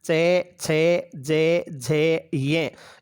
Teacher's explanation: चू यानी चे वर्गीय वर्ण, चे छे जे झे ये, इन सब का उच्चारण स्थान तालु होगा।